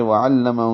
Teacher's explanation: وعلمہ میں عین وسط حلق سے ہے، باقی وعلمہ چاروں زبریں ہیں، جلدی سے پڑھیں گے۔ ہو الٹا پیش ہے، 2 حرکات لمبا ہوگا، اقصى حلق سے نکالیں گے۔